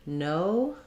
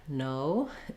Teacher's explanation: o in English is a diphthong meaning it slides from one mouth position to another in order to say it so I'm not saying an O and an uh separately it's · For most people who are non-native speakers, just thinking of O and making sure that you're holding it long enough is enough to get this sound. Basically, you're starting in the O position that's probably the same as your native language, and then just closing and relaxing a little bit as you go.